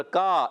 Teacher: کاف الف زبر کا، ایک الف کھینچنا ہے. کاف کا مخرج زبان کی جڑ اور تالو کا نرم حصہ